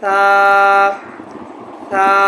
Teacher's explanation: محترم سامعین، ثا کے اندر جو عام طور پر غلطی کی جاتی ہے اس کی ادائیگی میں وہ یہ ہے کہ ثا کو سا پڑھتے ہیں، یعنی ثا کو ثا نرم حروف ہے، اس کی آواز سین سے بدل جاتی ہے تو اس کو سین پڑھتے ہیں، سا، جو کہ غلط ہے، بالکل غلط ہے۔